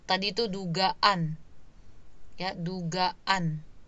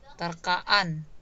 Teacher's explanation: Kan seperti ada stop sebentar antara a dengan a di kata dasar dengan a di sufiksnya. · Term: glottal stop